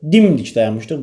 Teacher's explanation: Şuxluq məzmununda olsa dimdik dayanmışdıq, vurğu əvvələ düşür